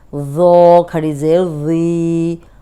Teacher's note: اب یہ نرم بھی ہے اور موٹا بھی ہے، سامنے کے جو دو دانت ہیں ان کے کنارے پہ زبان رکھ کے ادا کریں گے تو سیٹی نہیں آئے گی